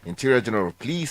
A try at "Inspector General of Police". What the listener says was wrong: Inspector General of Police. Not Interior General of Police. So the Inspector General of Police.